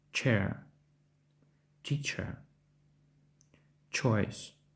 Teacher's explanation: схоже на український приголосний звук ч однак він вимовляється твердіше